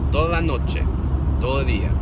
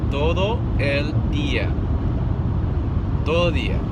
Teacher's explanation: So that's a trick that'll make you sound more Hispanic, is when you get used to saying it slow, once you speed it up, the D sound actually starts to go away.